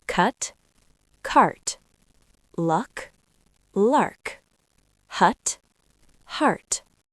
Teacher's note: Cut is a short uh sound like cup. Cart is a longer ah sound like car.